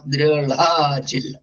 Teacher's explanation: അപ്പോ ഢ എന്നുള്ള അക്ഷരം ഋഗ്വേദത്തില് അതിന്റെ ഉച്ചാരണം ള എന്നാണ്.